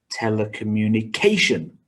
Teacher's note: one two three four five six seven syllables with stress on the sixth syllable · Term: word stress